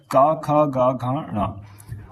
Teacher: का वर्ग जो है वो कंठ से उच्चारित होता है